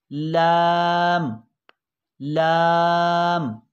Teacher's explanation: लाम ज़बान का किनारा और सामने वाले दांतों से पहली दाढ़ के मसूड़ों से, दांतों से लेकर पहली दाढ़ के मसूड़ों तक ज़बान को मिलाएंगे तो अदा होगा लाम लाम।